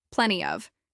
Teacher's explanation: This is pronounced with stress on plen, and of is often reduced.